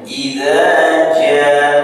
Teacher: Idza jaa, antara za dan ja itu berbeda panjangnya. Kalau idza dua ketukan, jaa 4 sampai 5 ketukan, dan ditandai ada bendera di alifnya sehingga dibaca lebih panjang. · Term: mad wajib muttasil